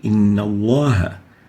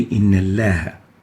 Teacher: The lam has to be pronounced with tafkheem, velarized.